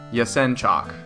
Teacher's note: chalk on a chalkboard but without the K so yesen chock accents on the second syllable